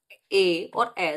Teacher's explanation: तो ए कहां से निकलेगा, कंठ और तालु दोनों के सम्मिलित जगह से